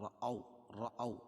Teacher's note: واو ساکن سے پہلے زبر ہو تو واولین ہوتا ہے، اس کو نرم آواز کے ساتھ جلدی پڑھتے ہیں